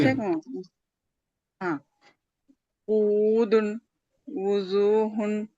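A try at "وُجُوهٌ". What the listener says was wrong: జీమ్ correct గా రావాలి. ఉజూహున్.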